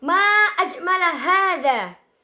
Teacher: Yaitu terjadinya tekanan stres di sini terjadi pada ma dan juga ajmala hadza. Hadza di sini memiliki tekanan stres karena memiliki vokal yang panjang. Di sini memiliki tekanan stres karena pengucapannya itu terdapat suku kata yang lumayan berat ketika diucapkan.